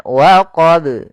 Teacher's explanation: Di sini ada qalqalah yaitu bacaan yang dia memantul.